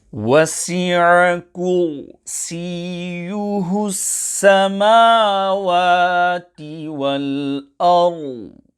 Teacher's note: Ayn must be pronounced clearly on the word wasi'a. Kursīyuhu, ra sakina, is pronounced full mouth.